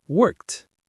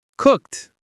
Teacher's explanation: It ends in a K sound, so we use the T sound, worked. One syllable, worked.